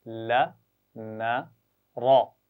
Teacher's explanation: یہ تین آوازیں زبان کی نوک ذرا کھڑی کر کے ایسے پیچھے لگاتے ہیں مسوڑوں کے ساتھ